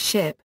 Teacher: voiceless palato-alveolar sibilant, as in English ship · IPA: [ʃ]